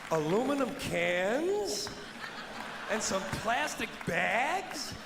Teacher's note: dragging out the ah sound in bags and cans to make them sound small and silly